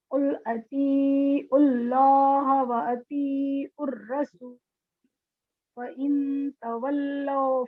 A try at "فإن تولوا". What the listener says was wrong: فإن بولنا اخفا کرنا ہے نا.